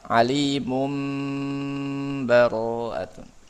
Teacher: dengan iqlab tanwin ketemu ba